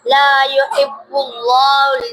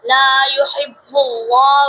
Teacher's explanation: اللہ کے لام سے پہلے پیش لام کو موٹا پڑھیں گے